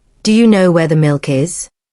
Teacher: Your voice rises at the end. That's the sound of curiosity.